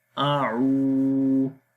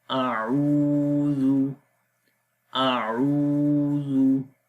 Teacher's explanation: This is waw madda here. Waw sakin is preceded by dhamma. That's why we long here 2 seconds. A'u, dal dhamma zu, a'udhu, a'udhu.